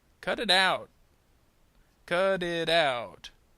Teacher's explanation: that T is going to sound more like a D sound in American English.